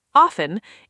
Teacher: Often, with a silent T, often, is considered more standard in American English, but often, with the T, is also widely accepted now.